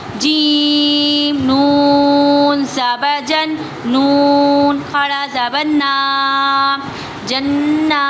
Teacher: نون مشدد پہ گنہ بھی ہوگا، نون مشدد کھینچا بھی جائے گا